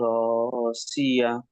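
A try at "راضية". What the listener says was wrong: রজিয়া, সি নয় জদ আছে।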